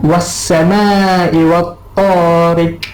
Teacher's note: Pada huruf qaf itu berada di penghujung ayat, penghujung kalimah, diwakafkan dia, maka dia lantunan dia sederhana kuat. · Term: qalqalah kubra